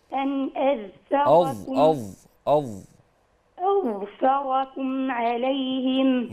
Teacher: رقاق الفاء بس لكن الظاء مفخمه